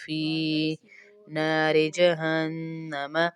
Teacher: فی کے ساتھ یا مدہ ہے، اس کو بھی کھینچیں گے. فی نہیں پڑھیں گے.